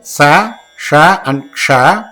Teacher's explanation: Since air is thrown out, in the Ushman group, all the 3 letters, Sa, Sha and Ksha, are all hard consonant, that is Karavinjani, as well as Mahaprana, that is aspirates.